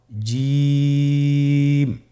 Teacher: এর মাখরাজ হলো জিহ্বার মধ্যখান, তার বরাবর উপরের তালুর সঙ্গে লাগিয়ে উচ্চারিত হয়।